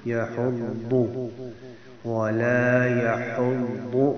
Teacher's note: یحض میں آگے ضاد ہے، ضاد کو ضاد پڑھنا ہے، دال نہیں پڑھنا